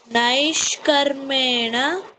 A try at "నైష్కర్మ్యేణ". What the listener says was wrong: నైష్కర్మ్యే. మావత్తు ఉంది, యావత్తు ఉంది. నైష్కర్మ్యేణ.